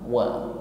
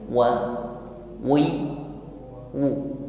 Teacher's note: Huruf waw keluar dari makhraj syafatan, yaitu bibir, tepatnya bibir atas dan bawah dihimpun ke depan. Wa. Sebelum wa terucapkan, pastikan bibir kita dihimpun ke depan.